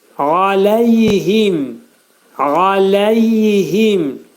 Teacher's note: Ayn hərfi boğazın ortasından çıxarılacaq.